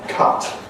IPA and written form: kʌt (cut)